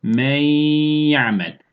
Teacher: hem birbirine katıyoruz hem de gunne sesi hayşum getiriyoruz